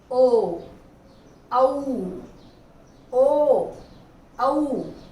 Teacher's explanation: ये कंठोष्ठ हो गए, यानी होठों से ही बोले जाएंगे लेकिन कंठ से ध्वनि आएगी